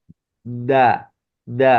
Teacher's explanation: Jadi dal itu pangkal lidah, pangkal lidah. Ujung lidah bertemu dengan pangkal gigi seri atas